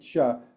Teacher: Because it's a narrow cavity, there's a lot of high frequency resonances. It's an unvoiced sound. Your vocal folds are not vibrating when you make the ch sound. And so you get this high frequency burst of information up here, and then that leads into the vowel. · when you say ch, the tongue kind of comes to the front of the mouth, and so it's making a narrow cavity. Because it's a narrow cavity, there's a lot of high frequency resonances.